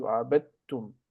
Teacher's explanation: You don't say abadtum, dit. So you don't need to repeat d and t consecutively. So you merge them into abadtum. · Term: merging sounds